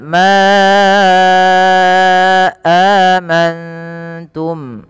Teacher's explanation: panjangkan lafal Ma sepanjang empat atau lima harakat karena ia ad Mad Jaiz munfasil Mad Jais munfasil adalah Mad